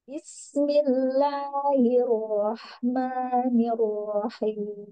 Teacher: di sin sukun, jangan memanjang, langsung Bismillahirrahmanirrahim